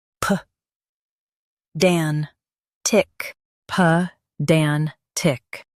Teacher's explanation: Stress dan and keep ped light.